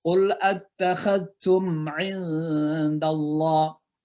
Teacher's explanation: mim mati ketemu ain, itu namanya izhar mimi. Jadi mimnya jelas.